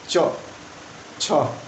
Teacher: जैसे बोलो छ, देख लो सांस ज़्यादा निकल रही है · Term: महाप्राण